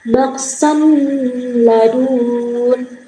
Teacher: Nah, idgam bila gunah apabila nun sukun atau tanwin bertemu dengan huruf ro dan lam dibaca dengan melebur tanpa dengung